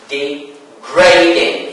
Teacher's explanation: stress falls on the second syllable, not on the first syllable, because it is considered as, because D here, D and E, D, is considered as a prefix.